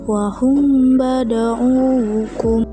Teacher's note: Kedua ada ikhfa syafawi yaitu apabila mim sukun bertemu dengan ba maka membacanya dengan menyamarkan suara mim dan dengan suara dengung atau guna selama satu alif atau dua harakat